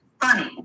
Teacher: This is labiodental. It's the lip and the teeth.